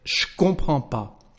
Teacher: this first part of the negation disappears when we speak. We just keep pas